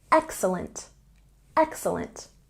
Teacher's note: say excellent with a stress on the first syllable